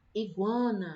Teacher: a vogalzinha aqui, o sonzinho demora mais, é o A. Então, quer dizer que o U é a semivogal, certo?